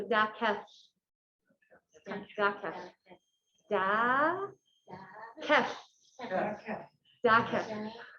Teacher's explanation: you kind of put your tongue up to the top of your mouth, and like the air comes out the sides. So even saying safely, LH, like LH is safely, and so Dakelh, Dakelh, Thank you.